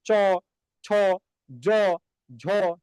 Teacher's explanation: তারপরে আপনি দেখেন এই যে চ ছ জ ঝ যখন আপনি উচ্চারণ করেন তখন এই যে আপনার জিহ্বা, এই জিহ্বাটা কোথায় স্পর্শ করে জানেন? উপরে যে তালু আছে এই তালুতে ঘষা দেয় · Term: তালব্য ধ্বনি